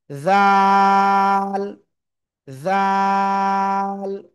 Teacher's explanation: ঠিক আছে, এই যে অক্ষরটা খেয়াল করবেন, আগে ছিল এটা কি দাল, এখন এর উপরে একটা নুক্তা আসলে সেটা কি হবে? ওই জিহ্বার আগায় উপরে দুই দাঁতের আগায় লাগাবেন, লাগিয়ে নরম আওয়াজে 1 2 3 আলিফ টেনে পড়বো।